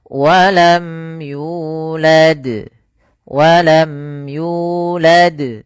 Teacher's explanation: ada izhar syafawi yaitu mimnya dibaca dengan jelas tanpa ditahan ya. Maka walam yulad walam yulad ya dengan jelas suaranya karena bertemu di setelahnya ada huruf ya.